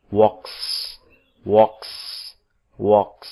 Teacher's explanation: S-nya tetap dibaca dengan bunyi S karena voiceless.